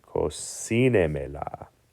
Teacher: the stress falls on the next to last syllable, which is si. So to stress that, we say cocinemela. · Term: stressed syllable